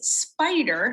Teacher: where it's got the um the unvoiced consonant following this and when i co-articulate it comes out voiced because it's preceding a vowel and vowel is voiced